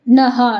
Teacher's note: ನ ಮುಂದೆ ವಿಸರ್ಗ ಇದೆ, ಅದಕ್ಕೆ ನಹ.